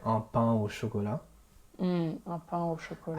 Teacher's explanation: you won't do the liaison with a nasal sound.